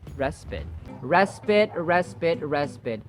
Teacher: The final vowel sound is as in schwa, the relaxed vowel sound.